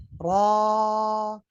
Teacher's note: Maka yang terangkat itu pangkal lidahnya aja. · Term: tafkhim